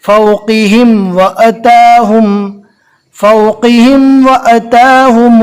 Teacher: میم ساکن کے بعد واو آ گیا، میم اور با کے علاوہ 26 حروف میں سے واو ہے، لہٰذا یہاں پر اظہار یعنی ظاہر کر کے پڑھیں گے۔